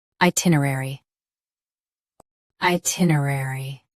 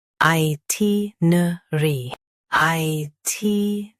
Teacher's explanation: US has nuh-ruh. UK has nuh. Don't add extra uh in UK.